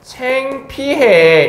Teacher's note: 후설인 아가 전설인 에로 바뀌었다라고 해서 이것도 전설 모음화라고 얘기를 할 수 있는 거예요